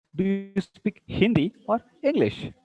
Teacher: See, Hindi rising and English falling.